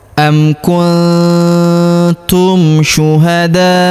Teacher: huruf nun sukun bertemu huruf tu, maka nun sukunnya melebur ke huruf tu, kita baca dengung dan samar. Dengungnya kita tahan 2-3 harokat.